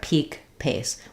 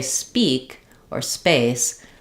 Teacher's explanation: So if I'm just saying peak or pace, I need a puff of air, peak, pace. When I say speak or space, there's no release of air there. You want to be careful not to make it so muted that it sounds like speak, but you couldn't really hear probably the difference between if that were a B voiced or a voiceless P.